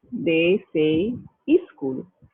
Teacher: So a word like school becomes, for a Bengali speaker, instead of saying school, they say e-school. They insert an E before the sk.